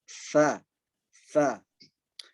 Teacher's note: ujung lidah bertemu dengan gigi seri atas